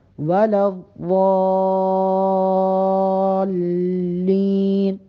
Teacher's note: ضاد کو لام کے ساتھ ملائیں گے تو لام پہ 1-2 سیکنڈ کے لیے وقفہ دیں گے، لام کی آواز واضح ہو ضاد کے اندر